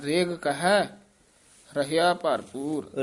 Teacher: ਰੇਗ ਪੋਲਾ ਹੀ ਬੋਲਣਾ, ਰਿਗ ਨਹੀਂ ਕਹਿਣਾ।